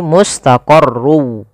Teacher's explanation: masukkan tanwinnya huruf wau sehingga suara n-nya hilang